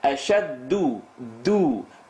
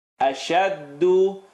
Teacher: Bring your tongue lower. If you're saying do, it's going to the gums. Bring it down lower to the teeth.